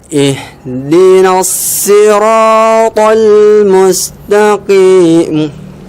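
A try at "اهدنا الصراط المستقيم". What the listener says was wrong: Itu yang mudahnya ya, tapi shotnya tadi masih belum dapat. Ihdinas nggak boleh si biasa. Bibirnya biasa karena di huruf shafir itu tidak ada ini, malah lidah tenang di bawah dan ujung lidah nempel di pangkal 2 gigi seri bawah. Pangkal 2 gigi seri bawah. Jadi dia tenang saja. Ini lidah kita, ujungnya ini gigi bawah kita. Cuma di sini saja.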